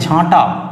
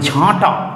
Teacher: এই যে নাক আর মুখ দুই দিক থেকে বায়ু, শ্বাসবায়ু বের হচ্ছে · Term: শত নাসিক্যী ভবন